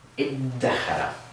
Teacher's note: In this case with 'dhaal,' what we do is we actually wind up with a 'daal' sound.